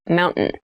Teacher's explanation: keep in mind when you pronounce this word in fast speech it sounds like Mountain the T sound is reduced